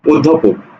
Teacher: তাহলে এই যে অটা এখানে কি উচ্চারণ হচ্ছে অটা উচ্চারণ হচ্ছে ও